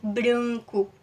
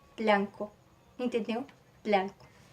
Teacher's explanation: Não nasaliza do jeito que é nasalizado em português